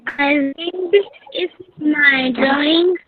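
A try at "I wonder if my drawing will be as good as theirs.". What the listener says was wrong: I wonder. It is not wind, it is wonder.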